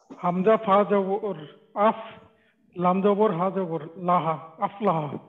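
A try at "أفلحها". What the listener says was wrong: লাম হা জবর না, লাম জবর লা হা জবর হা লাহা আফলা।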